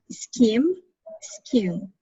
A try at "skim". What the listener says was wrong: This one here, letter I, you are pronouncing with the same sound of this letter. This one, we have the sound of E, scheme. This one, it's not E, it's scam.